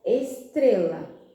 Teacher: A sílaba tônica é a penúltima, o tre.